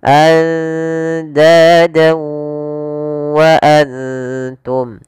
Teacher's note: Maka cara membacanya, masukkan fathatainnya ke huruf waw dan ditahan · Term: idgham bi gunnah